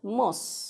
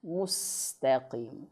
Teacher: Mus, bukan mos. Mustaqim. Nah, jadi o mos. Harusnya u. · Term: dhammah